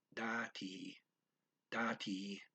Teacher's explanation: That's spelled D-A-T-I, dati, dati. The da is kind of quick and the T is kind of long